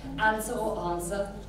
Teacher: I'm very northern with my flat vowels